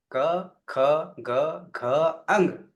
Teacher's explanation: આઠના ઉચ્ચારણ સ્થાન ક્યાં છે કંઠમાં છે